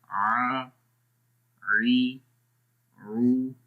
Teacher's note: گلے کے درمیان والے حصے سے ہم اس کو ادا کر رہے ہیں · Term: عین